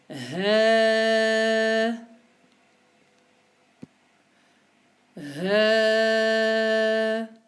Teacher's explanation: Il est au niveau des cordes vocales. C'est le même endroit où on prononce la hamza. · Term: le son ha